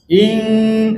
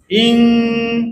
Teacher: Dengung bunyi di hidung, sempurna bunyi di hidung dua harakat.